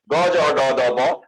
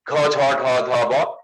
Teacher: যেমন ক চ ট ত প উচ্চারণ করেন, বাতাস কিন্তু লাগবে না, কিন্তু খ ছ ঠ থ ফ উচ্চারণ করেন, এখানে প্রচুর বাতাস পাচ্ছেন আপনি। গ জ ড দ ব বাতাস নেই, ঘ ঝ ঢ ধ ব এখানে বাতাস আছে। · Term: অল্প প্রাণ